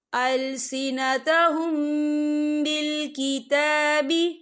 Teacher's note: لَفَرِيقًا يَلْوُونَ أَلْسِنَتَهُم بِالْكِتَابِ، یا دیکھیں السنتہم، یہاں میم ساکن ہے، میم ساکن کے بعد با آ رہا ہے تو یہاں پر اقفا شفوی ہوگا اور ہم یہاں غنہ بھی کریں گے، اور غننے کی مقدار جو ہے 2 سے 3 سیکنڈ ہوگی۔